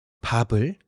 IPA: pɑbɯl